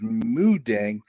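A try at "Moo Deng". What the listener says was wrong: It's not dang. It's dang with an e.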